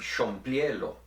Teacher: In the Tetelcingo system, any accented vowel in Spanish is usually pronounced as a long vowel, that is, with the tense pronunciation that we talked about before.